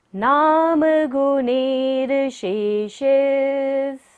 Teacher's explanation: हमें र को साथ में लेना है गुणिर के। नाम गुणेर शेषेस, सभी शेषेस के साथ ले लेंगे।